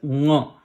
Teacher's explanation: The nga, the very important thing is how do you articulate it? Try to make a nasal sound from the same area, from the back of the mouth near the throat, the same as ga and kha, same position. The nasal sound is nga.